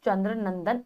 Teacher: इसका उच्चारण करते समय प्राणवायु नाक से बाहर आती है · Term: अनुस्वार